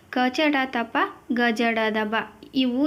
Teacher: ಮೂರನೆಯ ಸಾಲಿನ ಅಕ್ಷರಗಳು ಅಲ್ಪಪ್ರಾಣ ಅಕ್ಷರ ಅಕ್ಷರಗಳು ಅಂತ ಕರೀತೀವಿ ಅಲ್ಪಪ್ರಾಣ ಅಕ್ಷರಗಳು ಅಂದ್ರೆ ಕಡಿಮೆ ಉಸಿರಿನಿಂದ ಉಚ್ಚರಿಸಲ್ಪಡುವ ಅಕ್ಷರಗಳನ್ನು ನಾವು ಅಲ್ಪಪ್ರಾಣ ಅಂತ ಕರೀತೀವಿ